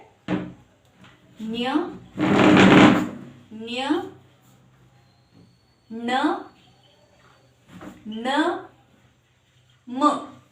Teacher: ಮೂಗಿನ ಸಹಾಯದಿಂದ ಉಚ್ಚರಿಸಲ್ಪಡುವ ಅಕ್ಷರಗಳನ್ನ ನಾವು ಅನುನಾಸಿಕಗಳು ಅಂತ ಕರೀತೀವಿ